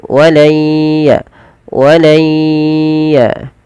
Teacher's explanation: Nah, di sini karena kita bertemu dengan huruf ya, ini idghamnya idgham naqis. Tidak secara utuh menghilangkan suara nunnya kepada huruf huruf ya. Jadi tidak hilang langsung, tapi dia masih menyisakan suara nun yang sedikit.